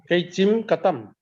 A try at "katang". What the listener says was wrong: Katang. Katang, yes, katang. Tang, not tam. Katang.